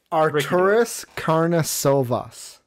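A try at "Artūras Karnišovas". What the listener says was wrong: Arturas Karnisovas. You got to throw in that emphasis. That's what that accent mark apparently means. But yeah, no, Arturas Karnisovas is his name.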